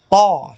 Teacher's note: Jadi punggung ujung lidah mengenai pangkal gigi seri atas sambil mengenai gusinya. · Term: huruf to